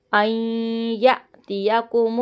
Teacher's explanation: نون ساکن کے بعد یا ہے، ادغام کا گنہ ہوگا